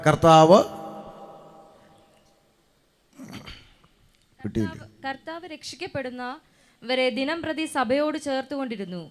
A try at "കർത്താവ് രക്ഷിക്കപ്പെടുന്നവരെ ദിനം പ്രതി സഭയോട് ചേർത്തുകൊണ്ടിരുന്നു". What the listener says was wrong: ഇങ്ങനെ വായിച്ചാൽ ഒക്കുകയില്ല, ചേർത്ത് വായര്. ശ്രദ്ധിച്ചേ, കർത്താവ് രക്ഷിക്കപ്പെടുന്നവരെ ദിനം പ്രതി സഭയോട് ചേർത്തുകൊണ്ടിരുന്നു.